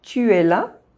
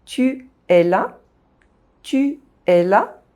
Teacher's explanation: two vowel sounds, side-by-side in a sentence, are not blended together, you don’t say them in the same syllable. There is just no pause between them. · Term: vowel link